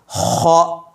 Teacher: حلق کے نچلے حصے سے خ ادا ہوتا ہے، خ۔ جب ہم کھنکارتے ہیں یا تھوکنے کی کوشش کرتے ہیں، بلغم نکالنے کی کوشش کرتے ہیں، تو جس جگہ سے وہ آوازیں آتی ہیں ایگزیکٹلی وہ خ کا پلیس ہے، خ کا پوائنٹ ہے۔